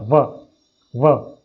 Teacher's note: वकारस्य दंतोष्ठम, वकार का अर्थ व ध्वनि, व का उच्चारण स्थान दंत ओष्ठ रहेंगे, दांतों की सहायता से और होठों की सहायता से बोला जाएगा व।